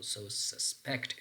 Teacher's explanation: You have to place a stress pattern on the second syllable.